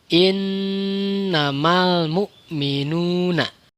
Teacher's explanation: didengung-dengungkan itu masuk ke rongga hidung kemudian ditahan tiga harokat atau tiga kali itungan